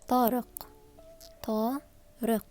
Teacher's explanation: Q comes from your lower throat.